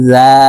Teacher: জিম হরফ জিহ্বার মধ্যখান থেকে উচ্চারণ করতে হবে কারণ জিমের মাখরাজ জিহ্বার মধ্যখান থেকে হবে